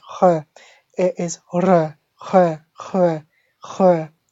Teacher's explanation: when you say the first R, it has to come from the back of the throat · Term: dry throat R